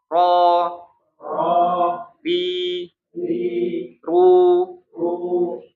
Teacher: ru identiknya dengan bibirnya monyong gitu ya.